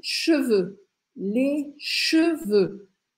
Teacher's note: boca lê ch duas vezes o mesmo som ch que é esse som do e francês que é um som mais fechado